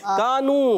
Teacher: कानू, काफ अलिफ जबर का, काफ को बारीक रखना है, अलिफ मद्दा एक अलिफ खींचना है।